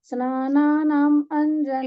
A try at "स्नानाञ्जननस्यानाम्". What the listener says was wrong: स्नानानां नहीं है, स्नानञ्जन्नस्यानाम्, स्नानञ्जन, आप स्नानञ्जन बोलिए ना, स्नानञ्जन।